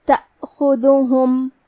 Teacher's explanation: کلمت تأخذہم میں الف پہ جزم ہے، تو ہم حمزہ کو ظاہر کریں گے. حمزہ کی ادائیگی حلق کے نیچے والی حصے سے ہے، خا پہ دال پہ اور ہا پہ تینوں پہ پیش ہے، تو ہم یہ تینوں پیش کو برابر سے ادا کریں گے.